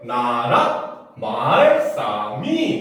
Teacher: 말자는 점이 두 개이기 때문에 낮았다가 높아지는 소리고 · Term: 성조